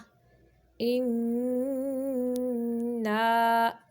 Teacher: اللہم انا، نون مشدد کا غنہ ناک کے بانسر سے نکالیں گے، اور آگے نا جو ہے یہ ناک سے نہیں نکالیں گے اس کی آواز نا کی، بلکہ یہ نا جو ہے یہ منہ سے اس کی آواز کو نکالیں گے